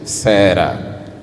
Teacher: resulta da vibração da língua com os alvéolos, que é o R menos forte